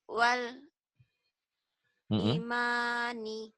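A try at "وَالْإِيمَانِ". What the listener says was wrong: Ma-nya panjang. I-nya panjang. Wal imani.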